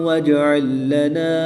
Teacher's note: جیم حروف قلقلہ میں سے ہے اور جب حروف قلقلہ ساکن ہو تو ان میں قلقلہ خوب ظاہر کر کے پڑھیں گے